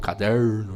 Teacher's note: Esse R retroflexo, né, que nós falamos, caderno, né, essa coisa, que deriva.